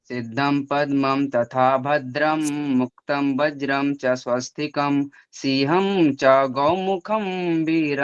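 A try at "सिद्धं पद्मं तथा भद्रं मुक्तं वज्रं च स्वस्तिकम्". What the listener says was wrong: गाना नहीं गाना, सिर्फ सुनाओ, गाना नहीं गाना।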